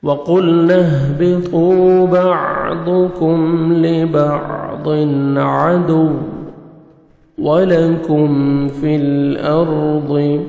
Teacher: کاف کو باریک پڑھنا ہے، میم ساکن کا اظہار ہے